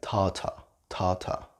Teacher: It depends on your accent as well. If you are from England, you might not pronounce the R.